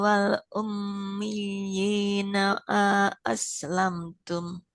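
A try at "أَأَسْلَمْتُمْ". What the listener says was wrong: Aslamtum hamzanya nggak panjang, tidak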